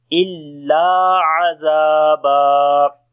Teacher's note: La we long due to alif madda, and ain we read from the middle of the throat. Zal we read in soft sound, and also we long due to alif madda.